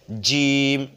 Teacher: জিমটা শক্ত হবে জিহ্বার মধ্যখান ওপরের তালুর সঙ্গে লেগে মানে উচ্চারণ হবে এভাবে জিম শক্তি দিয়ে উচ্চারণ করে জিম কি